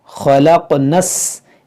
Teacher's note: इस नून को सीन से मिला देंगे